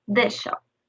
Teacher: In the word this, we emphasize this sound. And with this shop, it changes and melts into one sound, this shop.